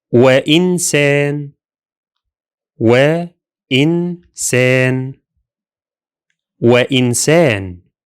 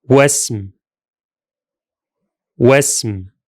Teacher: This Hamza was completely dropped and the two words were pronounced as one